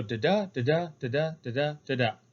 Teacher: it is considered rising meter because it starts with an unstressed syllable and ends with a stressed.